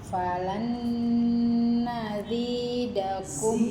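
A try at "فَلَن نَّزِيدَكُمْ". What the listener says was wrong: Zainnya kurang.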